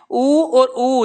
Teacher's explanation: जब हम उ कह रहे हैं तो हमारे जो होठ है वो वर्त बना रहे हैं · क्योंकि हम पै फे बे भे मैं ऊ और ऊ, जब हम ऊ कह रहे हैं तो हमारे जो होठ है वो वर्त बना रहे हैं, ठीक है। तो यानी कि हम ऊ में भी और बड़े वाले ऊ में भी इन वर्णों में प्यारे बच्चों किसका प्रयोग कर रहे हैं, होठ का प्रयोग कर रहे हैं। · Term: ओष्ठ